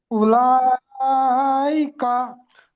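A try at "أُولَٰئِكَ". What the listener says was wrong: মাশাআল্লাহ, মাশাআল্লাহ।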